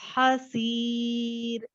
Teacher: This raw is light because raw से पहले या आ रहा है